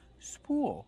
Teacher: We pronounce with a long oo plus a dark l.